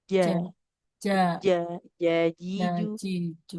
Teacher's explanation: Jadi tengah lidahnya menekan ke langit-langit. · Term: jim